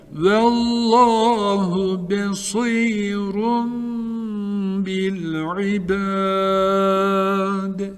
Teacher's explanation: Nun sesini tenvini mime çeviriyoruz. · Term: İklap